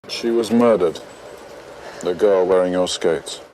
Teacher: He's non-rhotic, pronouncing r only before a vowel.